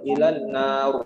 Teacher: Nar tipis itu Bu, ro-nya harus tebal.